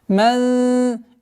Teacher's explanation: Мягкая ихфа в размере 2 огласовок назализации